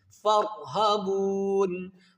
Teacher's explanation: گے، فَارْهَبُونِ نون ساکن کر دیں گے، اور با وا پیش بو کو ہم تین الف کی مقدار کھینچ کر نون کے ساتھ ملا دیں گے